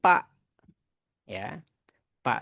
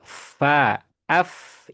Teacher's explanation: Jadi perut bibir bawah nempel ke ujung gigi seri atas. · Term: huruf fa